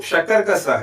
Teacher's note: ये जो शकरक का स है इसका उच्चारण स्थान होता है तालु। और क्योंकि इसका उच्चारण स्थान तालु है इसलिए इसका वर्ग हो जाएगा तालव्य।